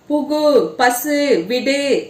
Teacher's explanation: தனிக்குறில் எழுத்தை அடுத்து வரும் வல்லின உகரங்கள் ஒரு மாத்திரை அளவிற்கு முழுமையாக ஒலிக்கும் · வழல இடையினம் மெல்லினம் இதெல்லாம் இருக்கு இல்லையா இந்த உகரங்கள் எல்லாம் முழுமையாக ஒலிக்கும் இவ்வாறு ஓசை குறையாமல் ஒரு மாத்திரை அளவில் முழுமையாக ஒலிப்பதை முற்றியல் உகரம் என்பர்